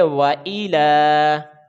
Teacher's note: حمزہ کو جلدی ادا کریں گے، یہ حرکات میں سے ہے، لام کے اوپر کھڑی زبر ہے تو اس کی لمبائی ایک الف کے برابر ہے